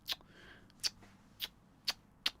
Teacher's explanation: a click sound produced by placing the tip of the tongue in the front of the mouth and pulling the tongue back sharply as if one was displeased by the actions of another person.